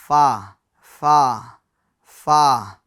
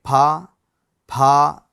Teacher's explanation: اچھا، فا یہ بھی ہونٹوں سے ادا ہوتا ہے، مگر اس کا مخرج کیا ہے؟ اوپر کے دانتوں کا کنارہ اور نچلے ہونٹ کا تر حصہ ملنے سے فا ادا ہوتا ہے۔ جیسے دیکھیں آپ، یہ اوپر کے دانت ہے، اس کا جو کنارہ ہے، ٹھیک ہے، اور یہ نیچے والا جو ہونٹ ہے اس کا تر حصہ ہے، تو یہ دانتوں کا کنارہ یہ نیچے ہونٹ کے اوپر لگے گا، فا فا فا۔